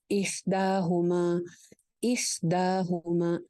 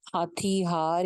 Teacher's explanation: اح والا ہا اور ہما والا ہا ان میں ڈفرنس ہے، ہا جو ہے احدا والا وہ درمیان حلق سے نکلے گا، اور جو ہما والا ہا ہے وہ نارمل ہا جو کہ ہم اردو میں بولتے ہیں